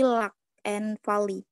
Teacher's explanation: Jadi udara yang terdapat dalam mulut itu dapat mengalir mengelilingi sisi lidah.